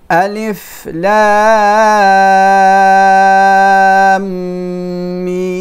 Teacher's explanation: Then the first letter of the mim is another mim. So when there are two mim together, we make idgham, we merge these two. That's why the second mim has shadda, here, so we hold it.